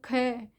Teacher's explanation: तो क है, क इजी बोला जाता है, फर्स्ट है। ख में आपको थोड़ा सा टाइम लग रहा है, महाप्राण थोड़ी श्वास की अधिक आवश्यकता है, तो ख, तो ये आपके इसमें महाप्राण में।